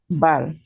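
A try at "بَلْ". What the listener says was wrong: Yeah, lam is not the echo letter. Okay, so now what we do, we don't pronounce the bouncing sound. We don't say like bal. If you read bal, so it will be wrong. Okay, okay, so it will be like bal.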